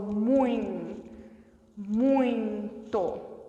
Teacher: que o som subiu na hora que você falou muito muito o som sobe e sai pela cavidade nasal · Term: ditongo nasal